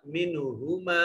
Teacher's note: इस मीम के बाद ये देखिए नून साकिन और इसके बाद हा हुरूफ इजहार में से है, तो इस नून को जाहिर करके पढ़ेंगे।